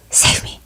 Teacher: it sounds like a very breathy, low, save me. You can barely hear him.